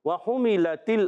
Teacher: वाव जब अदा करते हैं आप याद रखें होठों की गोलाई से वाव अदा होता है। वहुमिलतिल अर्दु में हा पर पेश आने की वजह हा भी अदा होगा होठों की गोलाई से, क्योंकि हा पर पेश है, और हा अदा होता है अलग के दरमियान वाले हिस्से से।